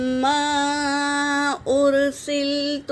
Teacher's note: اور میم ساکن کے بعد میم آیا ہے تو پہلے میم کو دوسرے میم میں ملا کر غنّے کے ساتھ پڑھیں گے، اسے ادغام شفوی کہتے ہیں۔ اور میم پر مد ہے، مد منفصل، 3 سے 4 الف کی مقدار کھینچیں گے۔